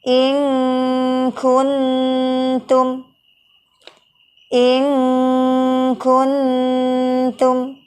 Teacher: Kecenderungan bunyi in, bunyi eng, namun berbeda dengan huruf qaf. Huruf kaf ini memiliki sifat yang tipis, sehingga tidak ada terdengar gunnah yang tebal pada saat mengucapkan ikhfa terhadap huruf kaf. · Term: ikhfa ab'ad